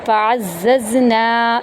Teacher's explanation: نون کو یہاں پر ہم 1 الف کے برابر لمبا کریں گے